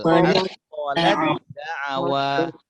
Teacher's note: Jadi huruf ta ini macam tak ada, langsung dibaca masukkan ke dal.